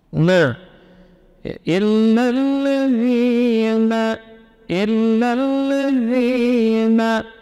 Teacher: Nun tawassut baina syiddah wal rakhawah, na, ya. Paduan di sini untuk ujung lidah dengan gusi atas serta khayshum.